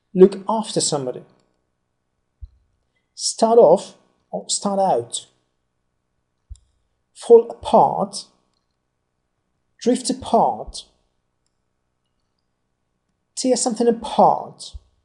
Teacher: most of these phrasal verbs are read together without any border it means in a single or almost single stream of air